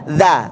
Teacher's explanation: ujung lidah ketemu dengan gigi depan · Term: huruf dza